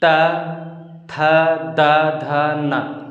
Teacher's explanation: जीभ हमारा जो है ये ऊपर के दांतों को टच करता है अंदर साइड से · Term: दंत्य